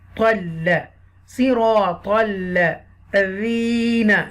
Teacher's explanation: Okay, this is the heavy letter sad and ta. Ta sound will connect with the lam mushadda with the extra stress.